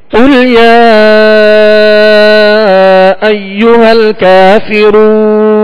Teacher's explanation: اور یا پر جو مد ہے اس کو دراز کریں گے، کھینچیں گے